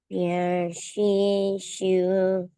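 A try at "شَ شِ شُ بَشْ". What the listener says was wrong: Oke, bukan sya, shi, shiu, tapi langsung sya, sya. Lihat, lidahnya itu langsung ke atas. Sya, sya, sya. Kamu perhatiin nih, lidahnya, condongnya ke atas dan agak ke depan. Sha, sha.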